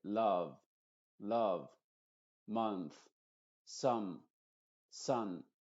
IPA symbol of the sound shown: ʌ